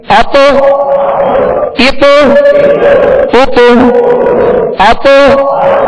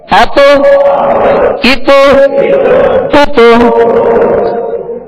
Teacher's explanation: جب حروف قلقلہ کو ادا کیا جاتا ہے تو مخرج میں جنبش پیدا ہوتی ہے اور آواز لوٹتی ہوئی آتی ہے